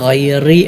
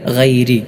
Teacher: റാഇന് കസർ ആണെങ്കിൽ ഏതു സ്ഥലത്തും അവിടെ തർക്കീഖ് അഥവാ നേരിയതായ രൂപത്തിലാണ് ഉച്ചരിക്കേണ്ടത്